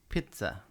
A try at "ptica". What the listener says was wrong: Not pizza like pizza, but ptica. Yeah, pizza. So it's spelled P-T-I-C-A, P-T-I-C-A, pizza. So like that P is kind of like it's like vermouth in a martini. You think about it, but it's not really there. So you're kind of like implying it.